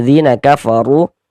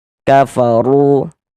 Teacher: Ini huruf ro dibaca tebal, dibaca tafkhim. Nah, jadi pangkal lidah kita tuh naik, terangkat ya ke atas. Kafaru, tebalkan huruf ro-nya.